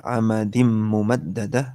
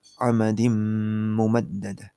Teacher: Tanwinnya hilang, masuk ke mim di depannya, kemudian habis masuk didengungkan. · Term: idgham bi gunnah